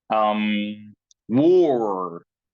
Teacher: Lips are made into a small circle, and the back of the tongue is lifted.